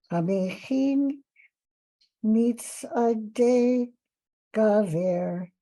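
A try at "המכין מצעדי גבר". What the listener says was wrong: Very good, very good.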